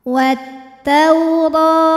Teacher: Huruf ra dibunyikan secara tafkhim karena ra berharokat fathah, maka dibacanya tebal, pangkal lidah naikkan.